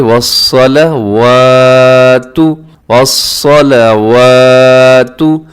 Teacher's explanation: والصلوات صاد موٹا ہے اور واو کے اوپر کھڑا زبر کی وجہ سے ہم لمبا کر دیں. والصلوات نہیں پڑھنا، والصلوات بلکہ والصلوات، والصلوات.